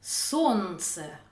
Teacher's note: on ne prononce pas le L